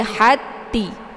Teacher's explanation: ta yang sukun ini tidak lagi dibaca karena sudah dimasukkan ke dalam ta yang kedua ini sehingga dikasih dengan bentuk tasdid ya. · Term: ta sukun